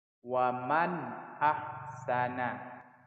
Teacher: Arti jelas itu tidak boleh mendengung. Jelas dan dibaca pendek. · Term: izhar khalqi